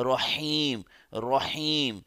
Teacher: را پر اگر صرف زبر ہی ہو اور اگر اس کے اوپر شد نہ بھی ہو تب بھی ہم اس کو موٹا پڑھیں گے